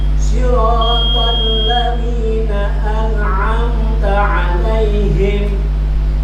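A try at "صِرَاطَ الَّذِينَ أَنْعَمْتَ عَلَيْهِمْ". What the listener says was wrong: Jangan disentak. Him alaihim. Him.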